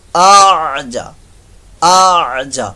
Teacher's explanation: تو یہاں پر جو ہے، یہاں پر تسہیل یعنی دوسرے حمزہ کو نرمی سے پڑھنا، اس طریقے سے پڑھنا کہ وہ ایسے لگے جیسے پڑھا ہی نہیں گیا، محسوس ایسے ہو لیکن پڑھا جاتا ہے.